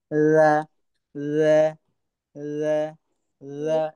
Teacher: জিহ্বার আগাটা উপরের দাঁতের নিচে এনে লাগাতে হবে, একদম কোমল ভাবে, স্মুথ ভাবে পড়তে হবে।